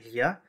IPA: ʎ